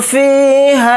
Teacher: فا کے ساتھ یا مدہ ہے، فا زیر فی کو تھوڑا کھینچ کر پڑھیں گے، ایک الف کی مقدار